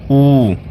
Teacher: ऊ ओष्ठ दीर्घ स्वर का उदाहरण है